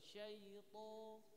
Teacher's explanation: to itu makhrajnya bukan di bibir. Dia hanya ujung lidah menyentuh pangkal gigi. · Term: huruf to